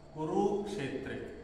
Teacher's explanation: कुरुक्षेत्र पहिला अक्षर काय आहे लघु कुठे छोट्या उकारची मात्रा त्याच्यानंतर रु मध्ये छोट्या उकारची मात्रा आहे पण पुढे संयोग अक्षर आहे त्याच्यामुळे हा रु काय झाला मोठा झाला त्याच्यामुळे रु चा उच्चारण पण मोठा करतो कुरुक्षेत्रे असं ठीक आहे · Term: मोठा अक्षर